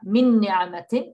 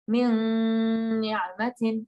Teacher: It will create a ghunna sound, okay? So not only will you get a tashdid, a shadda, you won't hear the sharp n sound. Instead, it will be a nasal ghunna sound.